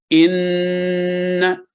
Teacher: اس حرف پر جب تشدید آ جاتی ہے یعنی شد کی علامت آ جاتی ہے تو اس کو یوں سمجھنا چاہیے کہ یہ دو آوازیں ہیں، پہلے نون ساکن اور پھر نون فتح کے ساتھ۔ تو اس کی اگر مثال ہم دیکھیں، ان، تو آپ نے دیکھا کہ پہلے ان اور پھر نہ۔